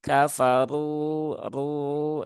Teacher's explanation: ada kaidah ee ra yang harus dibaca dengan ee tafkhim ya atau tebal Bagaimana cara meneembalkan ya prinsipnya sebenarnya hanya satu yaitu angkat pangkal